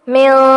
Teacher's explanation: اخفا ہوگا، نون کی آواز کو ناک میں چھپائیں گے